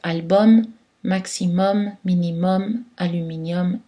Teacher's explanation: aux mots latins où la terminaison UM est prononcée homme, comme dans album. Donc pas de voyelle nasale ici.